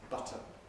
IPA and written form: ˈbʌtən (button)